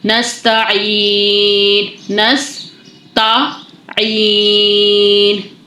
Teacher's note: سین میں سیٹی آئے گی تو اس کو سین کے سیٹی کے ساتھ واضح کریے گا.